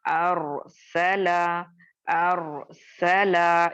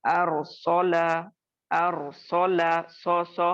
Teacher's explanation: रॉ को मोटा करने के चक्कर में आप और मैं सीन और लाम को मोटा नहीं करेंगे, क्योंकि बहुत लोगों से ये गलती होती है कुरान पढ़ते वक्त, मोटा हर्फ पढ़ने की कोशिश में उसके आगे और पीछे बारीक यानी हर्फ जो होते हैं उनको भी मोटा कर देते हैं।